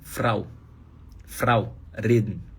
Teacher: Tem vários alemães que falam assim, vibrando a ponta da língua quando o R tá antes de vogal. · no sul da Alemanha, por exemplo, eles vibram a ponta da língua.